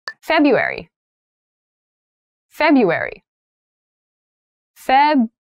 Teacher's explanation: So February has an interesting spelling. That first R isn't really pronounced.